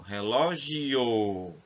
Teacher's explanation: então nós começamos com a semivogal que é o som fraco e finalizamos com a vogal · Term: ditongo crescente